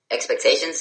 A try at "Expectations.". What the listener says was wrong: That should not be a question mark. You should be telling me that with a period.